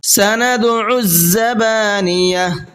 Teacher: یہاں بھی دال میں قلقلہ ہوگا اور ساتھ ساتھ زا کو سختی کے ساتھ میں پڑھنا ہے